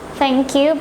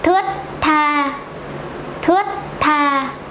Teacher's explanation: Is it thờ, thờ, thờ? You keep your tongue inside. Thờ, thờ, and no air comes out from your mouth.